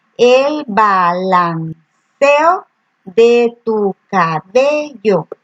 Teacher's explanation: se une en una sílaba dos vocales fuertes que normalmente se pronuncian de forma separada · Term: sinéresis